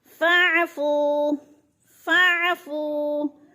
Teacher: आइन को हिलाना नहीं है क्योंकि ये हुरूफ़ क़लक़ला में से नहीं है, इसलिए इसको हिलाना नहीं है, जल्दी जल्दी अदा करना है। और फू पे वो मद्दा है, वो साकिन से पहले फ़ा के ऊपर पेश है, तो वो मद्दा एक अलिफ के बराबर खींच कर पढ़ना है।